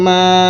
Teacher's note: এখানে আপনারা তিন আলিফ বা চার আলিফ পরিমাণ টান দিবেন